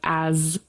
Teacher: as is with vibration we have the Z sound